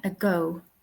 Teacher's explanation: The second syllable, the go is stressed